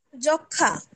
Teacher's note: যুক্ত ব্যঞ্জন বর্ণের সঙ্গে সংযুক্ত মফলার কোনো উচ্চারণ হয় না, তবে সামান্য অনুনাসিক হয়